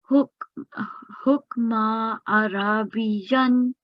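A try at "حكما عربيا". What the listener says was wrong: And on meme, you have tanween, right? So this will be hukman.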